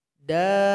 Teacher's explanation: Panjangkan dulu 6 detik atau 6 harakat, baru ditasydidkan kepada huruf ba.